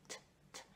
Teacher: La langue, elle vient taper en haut, derrière les incisives supérieures, sur le palais, juste à la racine